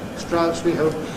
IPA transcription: s.t.r.aʊ.s w.i h.əʊ.p